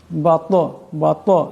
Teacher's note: তোয়া কলকলার হরফ, আওয়াজটিতে একটি টক্কর খাবে। বাত এমন করে।